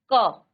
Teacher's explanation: आप जब क बोलते हैं तो क में आपका मुख के अंदर कहीं ना कहीं थोड़ी सी आपकी जो वायु है एक क्षण के लिए वह वायु आपके मुख के अंदर रुकती है। क तो देखिए क और बीच में आपकी वायु जो है थोड़ा रुक करके फिर अ का उच्चारण आया ख ग घ अ ङ तो सब में अ का उच्चारण आ रहा च छ ज झ य ट थ ड ढ ण त थ द ढ न अब आप देखिए सभी वर्णों में अ का उच्चारण आया है। · लेकिन जब आप व्यंजन का उच्चारण करते हैं, आप जब क बोलते हैं, तो क में आपका मुख के अंदर कहीं ना कहीं थोड़ी सी आपकी जो वायु है, एक क्षण के लिए वो वायु आपके मुख के अंदर रुकती है